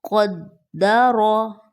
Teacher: قاف گرین ہے را گرین ہے دونوں کو موٹا کرنا ہے